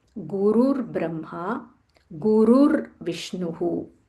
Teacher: It is not Guru Brahma, it is Gurur Brahma. Gurur, there is a half r here.